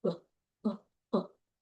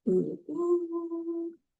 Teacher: Compared to ooh, it's slightly lower and it's shorter in duration. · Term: lax vowel